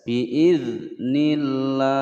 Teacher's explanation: ada zal sukun tidak dipantulkan karena zal bukan huruf qalqalah ya. Biasanya sering ada yang membaca biidznillah ya, salah.